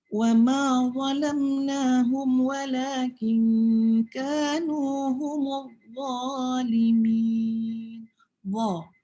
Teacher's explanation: Maknanya hujung lidah kita ni letakkan letakkan di atas sampai nak kena gigi dalam ya, yang atas tu. Jadi sebutan tu masih lembut tetapi tebal. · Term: huruf za